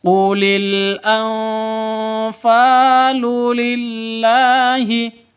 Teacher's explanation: bersenandung sebagai persiapan, menuju bunyi f atau ikhfa yang sebenarnya, karena ini disebut Ikhfa Haqiqi.